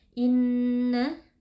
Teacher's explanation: terdapat nun tasydid, wajib dibaca dengan gunnah yang dipanjangkan.